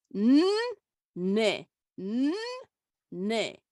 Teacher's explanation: There is no vowel between the two ends